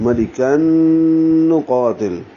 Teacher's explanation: کاف باریک ہے اور نون سے ملائیں گے، یہاں بھی غنہ ہوگا لیکن یہ ادغام مال غنہ ہے، اسے ادغام ناقص کہتے ہیں۔ · قوف کو 2 حرکات لمبا کریں گے اور تا کو لام سے ملاتے ہوئے لام ساکن پہ اظہار کر دیں گے۔